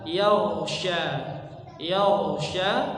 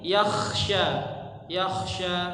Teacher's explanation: Itu diantara kesalahan membaca huruf gha. Yang kedua biasanya nanti huruf gha-nya berubah jadi kha. Misalkan pada kata yaghsha.